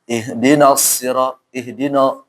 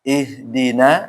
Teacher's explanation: nanya tipis kemudian shadnya tebal